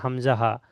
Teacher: হামজা হা কোথা থেকে উচ্চারিত হয়, হালকে বা কণ্ঠনালী শুরু হতে উচ্চারিত হয় হামজা হা, মানে সিনার কাছে।